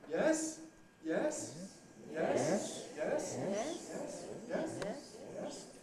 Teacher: The high rise, which really can start anywhere but ends pretty high.